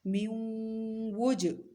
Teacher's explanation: ادغام، اور ساتھ میں ناک میں آواز لے جا کے ٹھہرا رہے ہیں، گنگنی آواز میں پڑھ رہے ہیں، اس کو کہتے ہیں غنہ۔